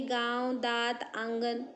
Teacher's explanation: अनुस्वार और विसर्ग व्यंजन है जो स्वर के बाद स्वतंत्र रूप से आते हैं। निरनुनासिक ऐसे स्वरों का उच्चारण नाक और मुंह से होता है और उच्चारण में लघुता होती है, जैसे गांव, दांत, आंगन।